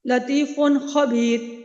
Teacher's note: نون ساکن اور نون تنوین کی آواز کو ظاہر کر رہے ہیں، کوئی غنہ نہیں کر رہے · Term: اظہار حلقی